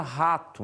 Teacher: o h é pronunciado como uma leve aspiração como a palavra rato